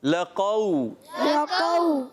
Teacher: قاف سختی سے, واو نرمی سے